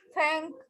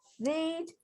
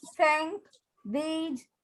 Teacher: So upper teeth and the tongue, front part of the tongue.